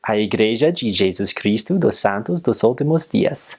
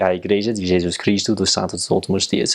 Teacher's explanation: It's a lot more closed mouth and a lot more sh sounds.